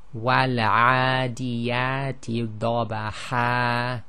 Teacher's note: Now with the substitution mad, we have a case where it is peculiar to the fatha tain. Okay, so when one stops on the fatha tain, when it's followed by an alif, then the hidden noon sakin, which is known as the tanween, is actually substituted for the alif